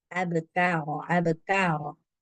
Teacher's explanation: hams ni dia paling kelihatan itu ketika sukun kayak terasa dia ada keluar angin gitu kalau dalam posisi berbaris dia juga e kelihatan tapi tidak sekelihatan